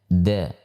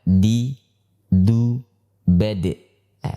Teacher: Huruf dal dikeluarkan melalui ujung lidah yang bertemu dengan pangkal gigi seri atas, ya, pangkal gigi seri atas, atau gigi yang sudah bersambung dengan gusi, ya, disitulah tempat keluar huruf dal, ya.